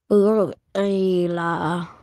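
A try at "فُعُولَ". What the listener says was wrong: No. What is the sound of reverse dhamma? So why are you saying ila? Yeah, fu'ula.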